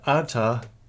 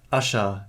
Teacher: the sequence RT developed to sh. Thus, original arta gives asha in the transmitted Western text.